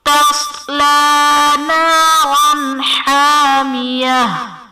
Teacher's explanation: نارا حامیہ میں را پر دو زبر کی تنوین، تنوین کے بعد حروف حلقی میں سے حا ہے تو یہاں پر اظہار کا قاعدہ ہوگا، یعنی تنوین میں ہم غنہ نہیں کریں گے